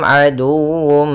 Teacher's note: Kita baca dengan bacaan izhar syafawi. Suara mimnya harus jelas.